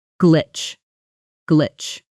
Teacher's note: A lot of learners soften that ending or add a little extra vowel sound after it, saying something closer to glitcha, but native speakers cut it off sharply.